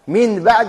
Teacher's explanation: ثم النون إذا التقت بحرف واحد تقلب ميما وتخفى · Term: القلب